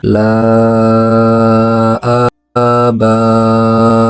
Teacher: Contohnya la ba'u, dibaca panjang 4-5 harokat. Ada yang membolehkan 2, 4 ataupun sampai 6 harokat. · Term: mad jaiz munfasil